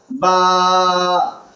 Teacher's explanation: बा होठों के अंदरूनी हिस्से से जिसको त वाला वाला हिस्सा कहते हैं।